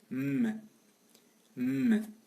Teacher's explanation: Nasal, bilabial, et sonore.